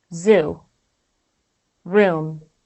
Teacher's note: and tongue just like this when you produce the correct ooh you can feel vibration in two places these are in the vocal cords and at the body of your tongue in the back of your mouth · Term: vowel sound ooh